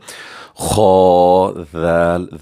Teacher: ذال نرم آواز سے پڑھیں گے، اس میں شکار نہیں آنی چاہیے، سیٹی نہیں آنی چاہیے